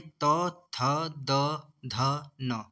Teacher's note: त वर्ग में त, थ, द, ध, न। ये आता है दंत्य वर्ग में